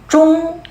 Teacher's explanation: Бұнда ж мен д-ның ортасындағы дыбыс.